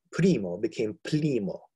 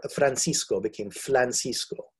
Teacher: the replacement of the R, the rhotic sound, with an L